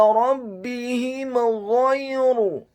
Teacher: Huruf ha-nya dibaca tafkhim, tebal, kasrah 1 harokat. Huruf mim yang sukun bertemu dengan huruf ghain yang fathah, hukum bacaannya adalah izhar syafawi.